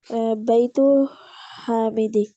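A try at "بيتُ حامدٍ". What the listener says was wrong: हम्म हामिदी या हामिदिन? दिन, क्योंकि अलिफ लाम नहीं आ रहा ना। यहाँ अलिफ लाम था, यहाँ पे अलिफ लाम।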